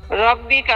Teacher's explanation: র মোটা হবে কারণ র এর মধ্যে জবর আছে